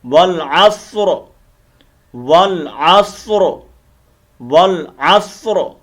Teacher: را وقفاً جب ساکن ہوگی تو اس کو موٹا کر کے پڑھیں گے